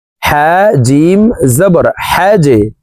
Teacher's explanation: জিম হরফ কলকলার হরফ, 3টি হরফের ভিতরে একটি হরফ জিম, তাই এই জিমকে নিচের দিকে ধাবিত করে ধাক্কা দিয়ে অর্থাৎ কলকলাহ করে উচ্চারণ করব।